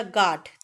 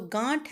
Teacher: देखिए, चंद्रबिंदी होने से हम नाक का भी यूज करते हैं बोलते समय। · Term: अनुनासिक शब्द